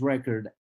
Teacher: I am stressing the first syllable of the word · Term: stress in words